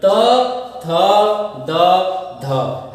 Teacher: हमारी जिह्वा कहाँ है, दांतों को स्पर्श कर रही है